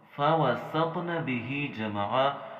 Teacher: بھی پڑھنا ہے، لیکن یاد رکھیے گا اس سے پہلے والا جو سین ہے اس کو ہم نے موٹا نہیں پڑھنا، اسے باریک پڑھنا ہے۔ · وقت میں نقعا۔ آیت نمبر 5، فَوَسَطْنَ بِهِ جَمْعًا، یہاں فَوَسَطْنَ، یہاں پہ ہم نے طا کے اوپر قلقلہ بھی کرنا ہے اور طا کا ہم نے موٹا بھی پڑھنا ہے